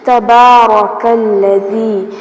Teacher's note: با کے اوپر کھڑی زبر ہے تو اس کو تھوڑا سا کھینچ کے پڑھیں گے · را کو پر کیا جائے گا کیونکہ را کے اوپر زبر آ رہی ہے